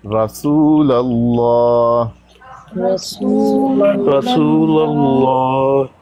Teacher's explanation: لفظ اللہ سے پہلے زبر ہو تو لفظ اللہ کی لام کو مفخم پڑھتے ہیں، پور پڑھتے ہیں